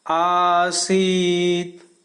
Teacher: अ से दुगने समय में उच्चारण होता है आ